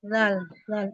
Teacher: ujung lidah menyentuh ujung gigi seri atas ya